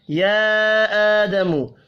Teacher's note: یا آدم، چھوٹی مد کو 3 الف کے برابر کھینچ کر پڑھیں گے، کھڑی زبر 1 الف کے برابر کھینچ کر پڑھا جائے گا